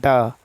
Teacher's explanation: मुर्धन्य अल्पप्राण घोष व्यंजन वर्ण का उदाहरण ड है ड ठीक है ड मुर्धन्य व्यंजन जब जिहा की उल्टी हुई